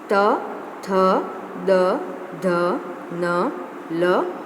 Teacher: इन सभी वर्णों को उच्चारित करते समय हमारे जो दांत हैं वो आपस में टकराते हैं, इसलिए इन सभी वर्णों को डेंटल मीन्स दंत कैटेगरी में रखा गया है।